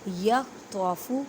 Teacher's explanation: تو کو ادا کرتے وقت خیال رکھیں کہ تا کی آواز نہ آئے کیونکہ حروف مستعلیہ یعنی موٹے حروف میں سے ہے